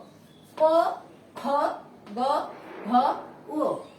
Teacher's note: এগুলো কণ্ঠ ব্যবহৃত হয় বলে এগুলোর নাম হচ্ছে কণ্ঠধ্বনি।